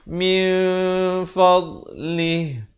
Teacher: Tapi bila datang fa, jadi samarkan bunyinya dua harakat. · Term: ikhfa